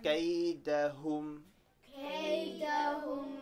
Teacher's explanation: when you say the hum, make sure you make your lips around so the dhamma sound comes out